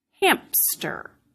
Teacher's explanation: you're moving from the sound M, which is voiced, to the sound S, which is not voiced. And as you do that, sometimes you can end up making a voiceless stop in between. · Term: insertion